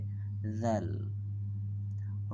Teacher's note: দাল উপরের দাঁতের আগার সাথে জিহ্বার আগা একসাথে মিশে উচ্চারিত হবে